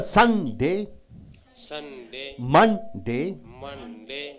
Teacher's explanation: You have to give stress on the first syllable, right?